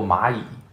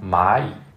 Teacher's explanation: In Mandarin, when you have two characters of the third tone, for example, Ma Yi, the first character falls on the second tone, Ma Yi. But when they're combined together, it becomes Ma Yi.